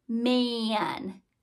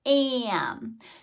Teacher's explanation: So instead of it being a pure A sound like apple, we know that the A sound in man is more like a whiny sound